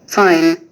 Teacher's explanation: আই একটি দীপ্থং বা দ্বিস্বর দুটি ভাওয়েল সাউন্ড একত্রে উচ্চারিত হয় প্রথম স্বর ধ্বনিটি একটু জোরে এবং দ্বিতীয় ধ্বনিটি একটু নিম্নস্বরে উচ্চারিত হয়